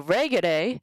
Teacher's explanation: the accent falls on RE because the GE is short